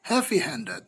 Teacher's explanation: then the primary stress is on the second word secondary stress is on the first word